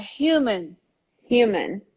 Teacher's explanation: And this U becomes really like IU, human.